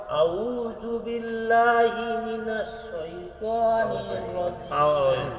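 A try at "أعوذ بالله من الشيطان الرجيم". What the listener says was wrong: আবার সেই ভুল হয়েছে। না, আউ না, আউ। আর শাইতানুর না, নির। শাইতানির রাজিম।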